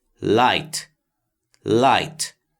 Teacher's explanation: look how the word light has the sound of two vowels but the vowels are together producing only one sound